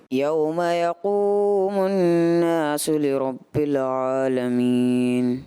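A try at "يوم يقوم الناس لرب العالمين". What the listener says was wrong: بٹ آپ نے یوم یقوم الناس، نون مشدد کا غنہ تھا، اس میں کمی محسوس ہوئی. لربل، لربل ہے نا، لربل نہیں ہوگا یہاں پہ، لام میں کلکلہ نہیں ہے.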